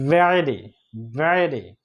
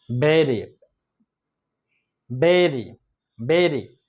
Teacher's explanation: ভিটা উচ্চারণ হয় সামনের দাঁতের আগার সাথে নিচে ঠোঁট লেগে যাবে